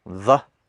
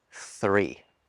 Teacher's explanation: The difference is that with the you're using your vocal cords, but with the th in 3, you're not.